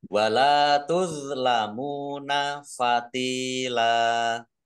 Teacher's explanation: Lam fathah alif mat tabi'i panjang 2 harokat.